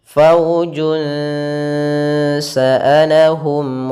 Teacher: Kalau izhar itu suara nunnya jelas atau suara tanwinnya jelas, kalau idgham berarti suara tanwin dan nunnya dimasukkan. Maka kita samarkan langsung ke huruf sin. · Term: ikhfa